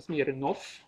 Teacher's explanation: man inte kan uttala V sist i ord